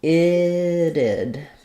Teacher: we have first syllable stress, the I vowel, and then this T is flapped. We have another I sound, a reduced I, and then our final D, it'd be.